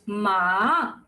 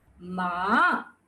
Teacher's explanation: The third tone is a rise and fall.